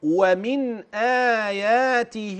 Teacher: ستجد ان النون ذلق وان الهمز حلقيه فبعد المخرج ادى للبيان